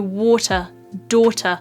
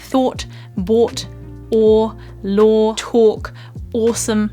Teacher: they have this curled round O sound at the start of them. O. The way that I'm making this sound is essentially my lips are quite closed and round, but the back of my mouth is still quite relaxed.